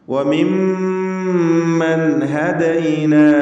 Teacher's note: സാക്കിനത്തായ നൂനിന് ഇൽഹാർ ഹൽക്കി നൽകി മണിക്കാതെ വെളിവാക്കുക